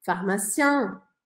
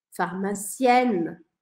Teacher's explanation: Deixei a boca aberta, saiu o som no masculino. Não vou falar o N. É só um som anasalado.